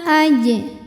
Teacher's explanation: yang sukunnya ini sukun asli dan ada di tengah bacaan kita maka cara membacanya dipantulkan jimnya dengan pantulan yang kecil dan tetap dialirkan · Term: Qalqalah Sugra